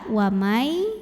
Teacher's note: Jaiz boleh berhenti boleh terus naik ada Idgham Bighunnah karena ada nun sukun yang menghadapi huruf ya cara bacanya nun-nya masuk ke ya wamai disertai dengungan tahan punya sifat yang tidak dimiliki huruf lain